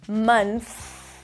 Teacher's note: Then you bring the tongue up for the N, mun. You stick the tongue out for the TH, month. It's a soft TH, allow the air to pass